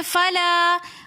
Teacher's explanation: فلا کے اندر بھی الف مدہ ہونے کی وجہ سے ہم نے فلا ایک الف کی مقدار کھینچ کر پڑھا